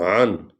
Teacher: عین جو ہے یہ حلق سے نکلتی ہے اور اس طرح پڑھی جاتی ہے اقصی حلق سے۔ نون آگے نون ہے وہ جزم والی ہے، وہ عین کے ساتھ پڑھی جائے گی۔